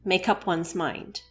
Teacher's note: So one example of this here is the word make followed by the word up. So to join these two words and sounds together, we have the first syllable may from the first part of make and the syllable cup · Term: connect words together